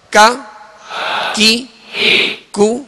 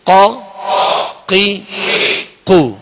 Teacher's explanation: کاف کو جو ڈنڈی والا کاف ہوتا ہے اس کو باریک پڑھیں گے اور قاف جو 2 نقطے والا اس کو پر پڑھیں گے، موٹا پڑھیں گے